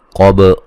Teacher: قاف کو موٹا با پہ قلقلہ